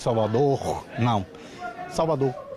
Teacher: os pesquisadores perceberam que esse r desaparece em alguns lugares